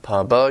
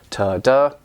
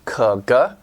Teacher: made by a speech organ a part of your mouth stopping and then releasing the airflow of your mouth and these are called stop consonants